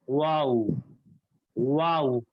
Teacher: ہونٹ اپنے گول کیجئے, زبان بھی ہلکی سی گول ہو جاتی ہے اندر, اس کے بعد آواز نکالیے واؤ واؤ.